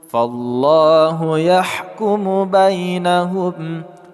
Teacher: Fallahu yahkumu bainahum. Lafaz Allah kita baca secara tebal atau tafkhim kerana huruf sebelumnya berkat fathah.